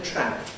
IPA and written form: træp (trap)